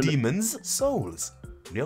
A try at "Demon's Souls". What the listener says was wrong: Yeah, but you don't have to put so much emphasis on it. Demon's Souls. Demon's Souls. Demon's